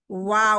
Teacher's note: पहले होंठ गोल होते हैं, बाद में हम छोड़ते हैं और फिर गोल करते हैं।